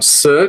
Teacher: você tem o som S, que é um som desvozeado, né? As consoantes podem ser desvozeadas, né?